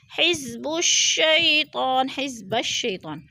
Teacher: یا ساکن سے پہلے شین کے اوپر زبر ہے تو ادھر یالین، یالین کو ہم نے لمبا بھی نہیں کرنا اور جھٹکا بھی نہیں دینا۔